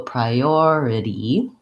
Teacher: So for this, I definitely recommend noticing and practicing that it has a tense E at the end, even though I have to be light and short in duration on that syllable